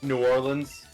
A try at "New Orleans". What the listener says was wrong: You need to pronounce it with as few syllables as possible. Nolans. Nolans.